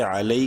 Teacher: یا لین ہے، لام کو شارٹلی پڑھیں گے